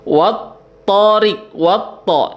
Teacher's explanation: Jadi tidak dibaca lam sukunnya itu tidak dibaca, tapi dileburkan ke dalam huruf syamsiyahnya, yakni ke dalam huruf to ya. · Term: mad alif lam syamsiyah